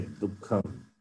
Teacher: The visarga also takes the sound of kakara. Dukkham. Okay, so like double k and Yes.